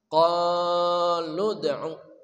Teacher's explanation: qaf ya, dari pangkal lidah. Qa panjang ada mad tabi'i, alif sebelumnya fathah.